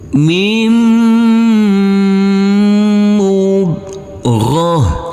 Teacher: Huruf tak marbutoh karena kita wakafkan maka berubah menjadi huruf H